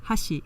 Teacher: It peaks on the accented mora, and then immediately following the accented mora, and this is the most salient, the most audible thing about Japanese pitch accent, is that immediately after the accented mora, pitch goes down, and it pretty much stays down